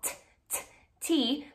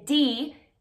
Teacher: It's actually the same sound, but one is voice off, t, T, where your vocal cords do not vibrate, and then D, very, very similar, and your voice is on for that one